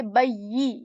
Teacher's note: in ya, we're not going to produce sound like j. Okay, rather we are going to say bayyi, yi sound, yi, and not j.